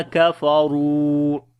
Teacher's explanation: ra we read in heavy sound, and also we long due to waw madda.